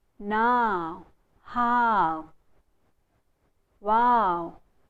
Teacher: The diphthong is a combination of a and u. A and u. Now, how, wow. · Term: diphthong ow